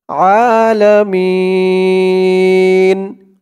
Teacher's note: এখানে অক্ফ থামার কারণে জেরের পরে ইয়া সাকিন একালিফ টানটা 3 আলিফ টান হয়ে গেছে। মি বলে 3 আলিফ টান দিয়ে এই নুনকে ধরতে হবে।